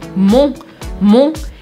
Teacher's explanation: a gente vai fazer um som nasal com uma boquinha bem arredondada